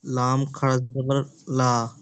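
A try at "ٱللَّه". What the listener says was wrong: লা হবে না ল হবে? না, ল হবে। আল্লাহ শব্দের লাম মুসাদ্দাদের পূর্বে জবর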